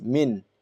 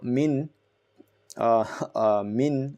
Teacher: min will make your tongue touch the upper part of your, the roof of the gum area of your mouth